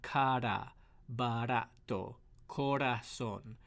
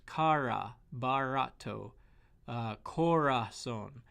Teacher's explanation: You want that bit of a flip, almost like a tap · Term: single R